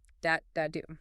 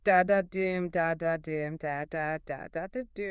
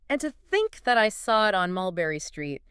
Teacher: a rhythm of two unstressed syllables followed by one stressed syllable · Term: anapestic tetrameter